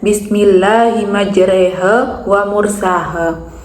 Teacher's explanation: khusus pada lafaz majreha dibaca E sehingga bunyinya majreha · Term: imalah